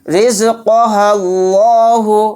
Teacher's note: ہا کو اگر لام میں ملائیں گے تو یہ الف سائلنٹ ہو جائے گا